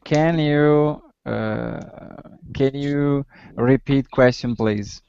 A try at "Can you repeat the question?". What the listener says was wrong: Okay, but remember, this is a yes or no question, right? So how should your intonation change? Can you repeat the question? So your intonation is going up.